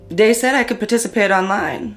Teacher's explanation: TH stopping, so that might be using something like a D sound for where you see a written TH, so dat for that.